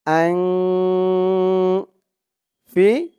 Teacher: নাকের ভিতরে লুকিয়ে গুন্না করে পড়তে হয় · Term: ইকফা গুন্না